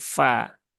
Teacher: fa hurufnya tipis, maka tipiskan dan jangan sampai berubah menjadi pa ya, tetapi fa